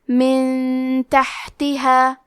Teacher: یہاں حکم ہے اخفاء تو ہم یہ حکم کو غنہ کے ساتھ ادا کریں گے